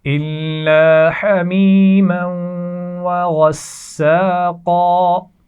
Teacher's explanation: میم کو ہم واو کے ساتھ جب ملا رہے ہیں تو یہاں غنہ بھی کیا جا رہا ہے